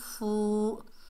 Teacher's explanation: آگے واو ساکن ہے، واو مدہ ہے، ایک الف کی مقدار کھینچ کر پڑھیں گے